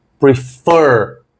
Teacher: A tônica está ali na última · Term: sílaba tônica